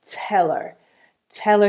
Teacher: the disappearing H on her and then the link that happens between tail and her tell